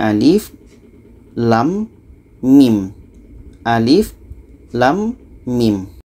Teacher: lam ini kita panjangkan 6 harkat setelah itu di tengah-tengahnya dengung 2 harkat dan setelahnya ada mim 6 harakat · ini harus dibaca satu-satu ini Alif Lam Mim Alif Lam Mim Alif ini pendek saja lam 6 harkat mim 6 harkat